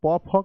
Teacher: प फ का उच्चारण स्थान जो होता है वह ओष्ठ से होता है